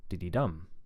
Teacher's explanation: And then diddy-dum for number 3, third syllable stress, diddy-dum. And again, the first 2 syllables are really, really low in pitch, and the last one is much higher because it's stressed